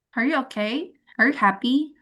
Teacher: Are you okay? Are you happy? Nah, itu semua naik.